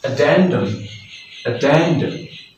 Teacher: The stress will be on the second syllable of the word